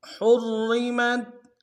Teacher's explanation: حرمت ہا کو را کے ساتھ ملانا، را کو موٹا ادا کریں گے۔ پہلا را موٹا ہوگا، دوسرا باریک ہو گیا۔ ہا کو گہرائی سے ادا کریں گے۔